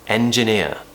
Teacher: practice going from a big smile into that very relaxed schwa sound at the end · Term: diphthong